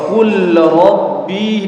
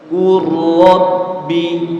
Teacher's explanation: Qul rabbi dibaca qurrabbi, jadi lam sukun, lamnya hilang ya. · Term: idgham mutajanisain